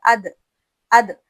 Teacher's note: یہ سختی کے ساتھ ادا ہوگا کیونکہ اس میں صفت جہر ہے، یعنی واضح طور پر ادا ہو جائے گا، اس میں سختی ہے.